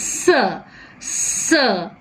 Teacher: we have the tip and the blade of the tongue come very near the alveolar ridge. So this is the alveolar ridge, and we have to close the gap because the soft palate is raised, and we draw like this.